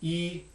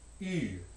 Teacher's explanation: the one on the left is unrounded high front E, and the one on the right, which is written with the letter Y in the IPA, is high front rounded E